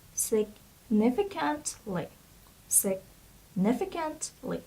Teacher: So a stress is on the second syllable, and it would be significantly.